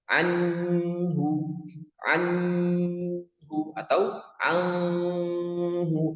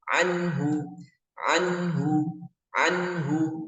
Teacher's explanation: cara bacanya jelas tidak boleh didengungkan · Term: izhar